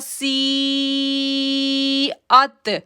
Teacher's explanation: سی کو ہم نے 5 سے 6 سیکنڈ کھینچا اور پھر ہم نے حمزہ کو تا کے ساتھ جوڑا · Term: مد متصل